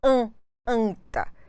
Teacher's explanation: a vogal a com a consoante n ida de outra consoante então nós temos a nasalização do a com a letra N